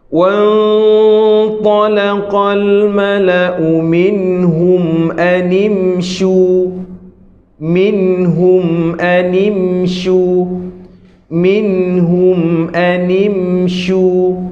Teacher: Kalau tuan puan berhenti maka dia bersifat de dengung. Bersifat ghunnah. Hanya keluar di hidung tapi bukan dua harakat. Kalau dua harakat tuan puan tu bukan sifat dengung.